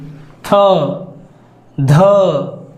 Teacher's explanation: व्यंजन और चौथा व्यंजन थ ध महाप्राण होता है अधिक हवा बाहर निकलती है